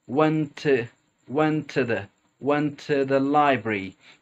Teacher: a t then the next word begins with the T so we're actually just going to pronounce one t kind of merge them together